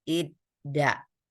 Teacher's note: Jadi ada bunyi sebelumnya bunyinya lembut, kemudian datang ta yang keras, maka terjadi letupan id ta. Maka diubah supaya lembut diganti dengan dal menjadi idda.